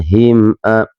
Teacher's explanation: huruf a sama a juga keluar dari tenggorokan, ini huruf halqi juga